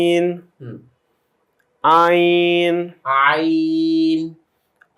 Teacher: গলাতে একটু চাপ দিয়ে বের করতে হয়, আইন হলকের মাঝখান থেকে।